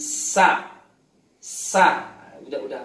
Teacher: pahami saja sin nafasnya dilepas, suara dilepas plus sofir udah bener